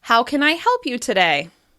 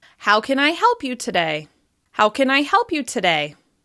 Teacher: As you can hear, my voice is rising to the most important word help and then falling down afterwards. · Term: falling intonation